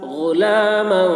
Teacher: غین کی آواز موٹی ہو رہی ہے اور میم کے اوپر دو زبان کی تنوین ہے، اس تنوین میں اخفاء ہو رہا ہے۔